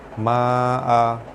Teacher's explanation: huruf mad bertemu dengan hamzah dalam satu patah perkataan, hukumnya mad wajib muttasil dibaca panjang 5 harakat.